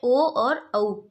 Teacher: ठीक है, ओ और औ को कंठ ओष्ठ, कंठ तालु, कंठ और तालु, कंठ ओष्ठ, कंठ और ओष्ठ, ओष्ठ मतलब होठ। तो कंठ और होठ की सहायता से जो शब्द बोले जाते हैं वो है ओ और औ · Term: कंठोष्ठ